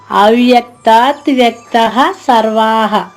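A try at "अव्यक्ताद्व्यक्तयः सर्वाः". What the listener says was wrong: కాదమ్మా, అవ్యక్తాద్వ్యక్తయః. యా మెయిన్. అవ్యక్తాద్వ్యక్తయః. సర్వాః. అవ్యక్తాద్వ్యక్తయః సర్వాః.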